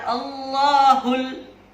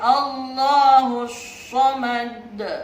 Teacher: Padahal ada alif lam, tidak dibaca Allahul, tapi Allahus samad. Itu disebut alif lam samsiyah.